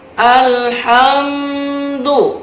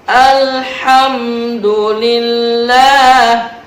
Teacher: Alhamdu ada mim sukun ketemu dal, namanya ijhar syafawi. Jelas, tidak boleh dengung, tidak boleh lama. Alhamdu tidak boleh, jelas, harus jelas.